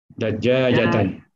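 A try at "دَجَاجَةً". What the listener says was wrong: Dajaja tidak bertasib ya. Dajajatan Pak Haji ya.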